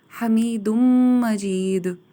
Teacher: دال کی جو تنوین کی نون ساؤنڈ تھی وہ میم کی ساؤنڈ میں مرج ہو جائے گی، ادغام ہو جائے گا، حمید مجید۔